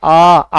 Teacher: आ बोलते हैं, तो हमारा मुख क्या होता है, ज्यादा खुलता है, मुख क्या होगा अपना, ज्यादा।